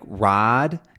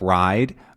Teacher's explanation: the I sound can become a single sound